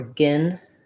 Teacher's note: When I'm saying gin, my whole tongue is lifted and pretty high. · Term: I vowel